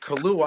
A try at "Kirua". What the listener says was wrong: It's actually Kirua. It's pronounced Kirua, but I just Kilua is fine, stuff like that. But it's actually Kirua. Okay, it's like double R. Pretty much turn the L's into R because it's Japanese.